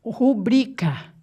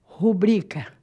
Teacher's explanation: É rubrica, sílaba tônica é o bri.